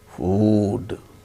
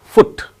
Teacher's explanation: when the word ends with D sound, then it is elongated, food. When the word ends with T sound, it is not elongated.